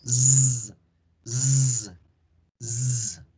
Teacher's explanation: Hacemos el sonido de la S, pero hacemos la vibración de la garganta. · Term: la Z